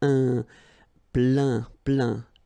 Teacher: Remember this E-I-N nasal. So it goes in your nose